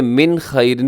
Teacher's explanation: من خیرن پہ اظہار حلقیہ کیونکہ نون ساکن کے بعد خا ہے اور خا حروف حلقی کے اندر شامل ہے۔